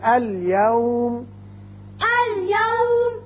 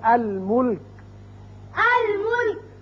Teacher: اس میں آپ نے دیکھا کہ یہ 14 حروف قمری جب آئے تو لام کو ہم نے پڑھا، یعنی لام کا اظہار کیا